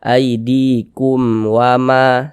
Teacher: Jadi, dibaca dengan jelas tanpa bunyi sengau. Jadi, itu dibaca secara singkat. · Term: izhar syafawi